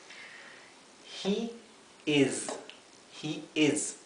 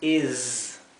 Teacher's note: Y aquí la s, intenten que sea zumbada. No es una s como del español, no es es is.